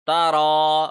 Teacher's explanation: را کو ایک سیکنڈ لمبا کیا کیونکہ کھڑی زبر ہے